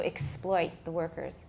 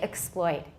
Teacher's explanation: I have a full vowel on X, by the way.